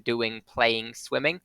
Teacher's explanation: it's an N made with the back of your tongue in the same place as you make a car sound so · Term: velar nasal